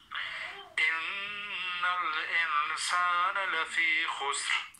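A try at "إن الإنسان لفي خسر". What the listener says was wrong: ان اخفاء ہو رہا ہے. ان الانسان لفی خسر.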